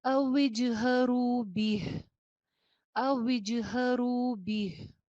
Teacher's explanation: قَوْلَكُمْ، قَوْلَكُمْ أَوْ اجْهَرُوا، اوج، واو کے نیچے زیر ہے، ہونٹ گول کرنے کے بعد اس کی زیر کی ادائیگی ہوگی وج، وجہرو، وجہرو. را کے ساتھ واو مدہ بھی ہے، آواز ایک الف کے برابر لمبی کیجئے.